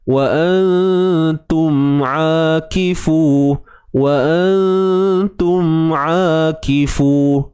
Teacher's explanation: Huruf ain sempitkan di bahagian tengah kerongkong kita.